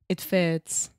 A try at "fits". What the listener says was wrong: Yeah, but when you say it fits, you are actually making more of a T sound.